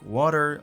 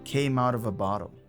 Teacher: the T in out morphed into a soft D sound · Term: flap T